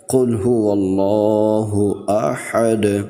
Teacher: ہا کو اس کے مخرج سے ادا کریں گے، یعنی حلق کے درمیانی حصے سے ہا کو ادا کرتے ہوئے پڑھیں گے۔ قل هو اللہ احد، اور دال پر قلقلہ کریں گے۔